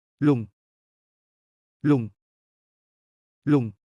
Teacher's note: Sounds like long with a falling tone.